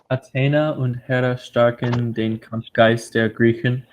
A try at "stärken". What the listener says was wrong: Make sure you get that A sharper A. Stärken den.